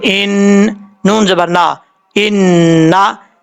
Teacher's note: نون کے اوپر شد ہے، غنہ کریں گے ایک الف کی مقدار